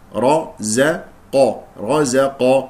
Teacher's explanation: الراء والقاف مفخم القاف من حروف الاستعلاء والراء مفخم لانها مفتوحه